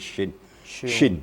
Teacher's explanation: terasa getarnya di tengah-tengah lidah dan di tengah langit-langit